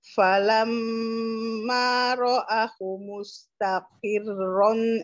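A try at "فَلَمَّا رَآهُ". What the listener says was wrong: Falamma ro'a hanya tadi terbaca pendek ya.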